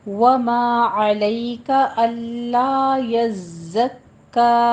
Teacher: वमा अलैका अल्ला यज़्ज़क्का, वमा अलिफ मद अदा करना है, अलैका आइन वस्ते हलक से अदा करें